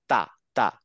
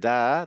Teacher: কিন্তু যখন দা বলছে, দা, তখন গলায় একটা হালকা ভাইব্রেশন হয়। আমরা যদি গলার ঠিক মাঝ গলার একটা হাতটা রেখে ধরে যদি তা বলি, তা জাস্ট বাতাস বের হয়ে যাচ্ছে, কিন্তু যখন দা বলছি, দা, দা, দা, দা, একটা হালকা ভাইব্রেশন হয়।